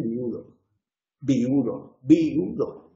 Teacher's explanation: hay muchas personas en Castilla que dicen viudo, viudo, viudo, 3 sílabas